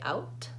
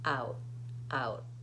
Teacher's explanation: I don't say out, I say out, out. I go up to make the T and I don't release the air. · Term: stopped T